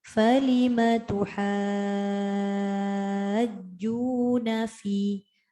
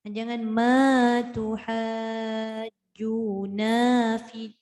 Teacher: Bunda ambil dekat falima, jangan panjangkan ma. Jangan panjangkan na. Nampak tak dekat falima, nak masuk dekat tuha tu jangan lerikkan suara tu.